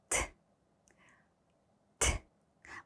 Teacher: 이렇게 바람 빠지는 소리가 나요. 무성음입니다